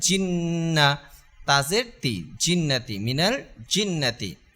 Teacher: নুনের মধ্যে যেহেতু তাসদিদ দেখা যাচ্ছে তাহলে আমরা দেরি না করে গুন্না করে ফেলবো এক আলিফ পরিমাণ গুন্না